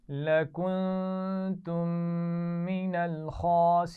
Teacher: لکنتم نون ساکن پر بھی غنہ ہے اور آخر میں میم ساکن کے بعد میم ہے تو وہاں پہ ہی غنہ ہے.